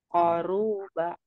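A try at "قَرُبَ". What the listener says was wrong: Nah, hati-hati ru-nya kepanjang.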